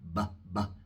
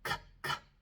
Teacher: Ven, cuando pronuncio la C, mis cuerdas vocales no vibran, es puro aire, K, K. Así que la B es sonora, B, B, y la C es sorda, K, K.